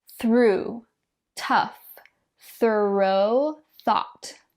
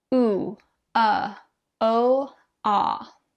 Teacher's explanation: One interesting thing about this sentence is that your mouth opens wider as you go. So we start with the most closed sound of the 4 and make our way to the most open, which you can see on our vowel chart right here.